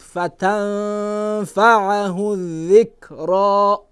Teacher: در فتنفعه نونی ساکنه به فا چی میشه؟ اخفا میشه.